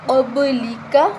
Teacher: قاف کو موٹا پڑھیں گے، با پہ قلقلہ کریں گے